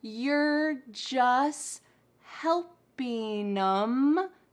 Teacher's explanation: We cut out the T in the word just all the time.